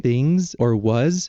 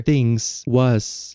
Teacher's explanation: Chicano English turns the Z's into S's